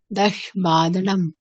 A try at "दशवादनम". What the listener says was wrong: দশ না, দশ। সংস্কৃতে সবসময় অকার সহিত উচ্চারণ হবে। দেখুন একটা জিনিস পার্থক্য দেখুন, এই শর্ট, আমরা কি বললাম শর্ট, কেন শর্ট বললাম? যেহেতু টকারের নিচে হলন্ত আছে, হলন্ত মানে টকার এখানে হাফ, তাই জন্য আমরা শর্ট বললাম। কিন্তু বাকিগুলোর ক্ষেত্রে দেখুন প্রত্যেকের সাথে অকার যুক্ত আছে।